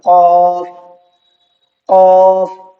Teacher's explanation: قاف کا مخرج تھا نرم حصے سے